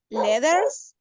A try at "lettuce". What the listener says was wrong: Lettuce. Lettuce. No, ¿le va a poner letras o lettuce? Lettuce, como una U. Lettuce. Porque dice letters, sopa de letras. No, lettuce.